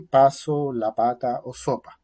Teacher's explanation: el fonema bilabial oclusivo áfono